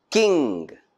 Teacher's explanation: the soft palate is rised and the nasal resonator shuts off the air stream is blocked by rising the back of the tongue to touch the soft palate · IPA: /kɪŋ/